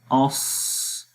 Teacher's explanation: حمزہ صاد زبر اس، تو آخر میں دیکھیں سانس جاری ہو رہا ہے، تو یہ حمز ہے۔ حمز میں سانس جاری رہتا ہے اور آخر میں سانس جاری ہو رہا ہے، جس سے حمز کی صفت اس حرف کے اندر آ رہی ہے، جو کہ ہمیں واضح طور پر پتہ چل رہا ہے۔ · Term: ہمز